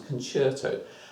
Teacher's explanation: Concert, stick an O on, and we say it in sort of an Italian accent because the C becomes a ch sound. So rather than concert, it becomes a concerto.